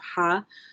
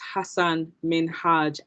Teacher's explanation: imagine you're breathing into your hand and you're checking your breath it's that kind of ha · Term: heavy h